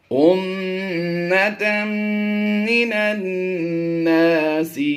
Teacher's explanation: मीम मुशद्दिद और नून मुशद्दिद में हमेशा गुन्ना करके पढ़ते हैं हम।